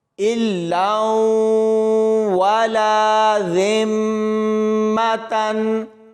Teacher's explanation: لام کو واو کے ساتھ ملائیں گے تو یہاں پر غنہ کر کے پڑھیں گے۔ اس کے بعد اس لام کو اس الف کے ساتھ ملاتے ہوئے پڑھا جائے گا۔